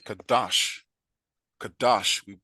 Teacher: we simply make the second radical of root a longer louder sound